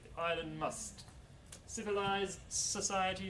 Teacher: the D is elided because it's between two consonants